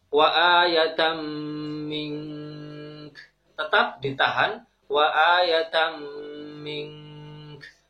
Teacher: Kaidah ikhfa tetap berlaku di sini. Ketika ada nun sukun bertemu dengan huruf kaf, maka suaranya disamarkan dan dihunahkan, dihunahkan kemudian ditahan kurang lebih 2 atau 3 harokat.